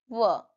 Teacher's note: व का उच्चारण दंत और ओष्ठ दोनों का मिलन से होता है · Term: दंतष्ठीय व्यंजन, दंतस्थीय व्यंजन